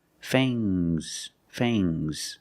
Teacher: use a long a plus the nasal sound M and a soft G fangs fangs and the S is making a zebra sound Z